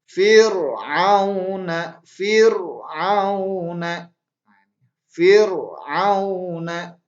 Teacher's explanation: ro tarqiq yaitu berarti ro-nya dibaca dengan tipis.